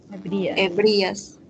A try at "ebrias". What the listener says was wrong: Y no decimos ebrías, sino ahí no existe, no debe existir una tilde. En ese caso, la mayor fuerza de voz está en la E.